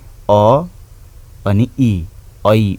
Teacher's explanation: ऐ उच्चारण हुँदा लेख्दाखेरि ऐ लेखे तापनि सिङ्गै ऐ लेखे तापनि उच्चारण गर्दाखेरि चाहिँ हामी अ अनि इ ऐ उच्चारण गर्छौं